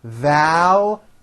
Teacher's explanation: There's a strong L and then a hidden Y.